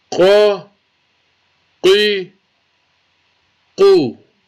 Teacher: musta'liya with the full mouth from the top of the throat. قاف زبر قا قاف زیر قی قاف پیش قو قا قی قو.